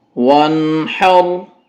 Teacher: ہا کو سینے والی سائڈ سے ادا کریں بھاری آواز کے ساتھ